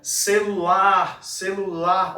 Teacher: Olha, o lar sendo mais esticado. Então, esse lar vai ser a nossa sílaba tônica.